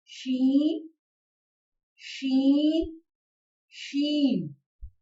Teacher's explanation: زبان کا درمیانی حصہ جب تالو کے درمیانی حصے سے لگے تو شین ادا ہوتا ہے۔